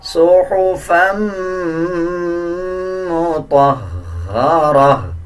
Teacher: جب فا کو میم کے ساتھ ملائیں گے تو غنہ کریں گے اور غننے کی آواز کو ناک سے نکالا جائے گا